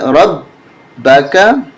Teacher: با پہ تشدید ہے، اس وجہ سے ہم سختی کے ساتھ پڑھیں گے، زور دیں گے با پہ